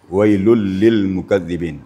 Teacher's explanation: harus ada penekanan nih pada lul pertama kemudian lil